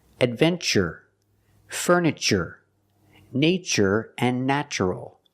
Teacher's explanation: We pronounce the TU with the ch sound, like chicken, when there's no stress after the T.